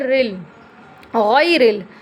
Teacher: اگر را پر زبر یا پیش ہوگی تو را پر ہوتی ہے، لیکن یہاں پر را کے نیچے زیر ہے اس لیے پر نہیں ہوگی